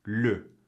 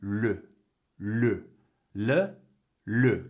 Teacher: The difference between the two is lip placement, as far as I can tell. Le with open lips, le, with lips pushed further forward and more closed.